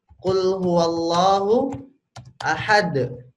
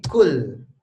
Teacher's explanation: Q di lidah bagian belakang ya pangkal lidahnya naik